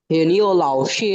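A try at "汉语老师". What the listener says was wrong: হান ই লাও শি, হান হান ই, হান ই লাও শি। এই ওয়াই ইউ এর উচ্চারণটা যে আমরা ইউ এর উপরে 2 ফোঁটা যে উচ্চারণটা করছিলাম না, সেটা হবে ই, হান ই লাও শি।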